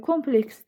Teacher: Kompleks isə vuruğu əvvələ düşür. Yəni birə düşür.